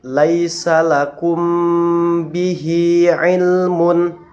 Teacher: cara membacanya adalah dengan menyamarkan bunyi mim sukun serta dengan memperjelas gunnah yang ada di dalam mim tersebut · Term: mim sukun bertemu dengan ba